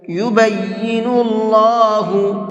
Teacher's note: اللہ کے لام کو منہ بھر کے پڑھیں گے، اس لیے کہ اللہ کے لام سے پہلے پیش ہے